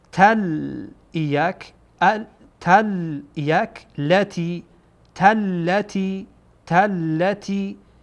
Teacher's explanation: جعلنا نل نل نل قب قب قبله قبلت قبلت جعلنا القبلة. اینجا تا با لام وصل میشه و لام دو تا، گویایی که دو تا لام هست، یعنی دو تا تلفظ میکنیم.